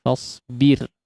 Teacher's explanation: kondisi huruf ra ditipiskan ya. Ra sukun yang sebelumnya huruf berharakat kasrah ya. Di sini ditipiskan fasbir ya li hukmi rabbika.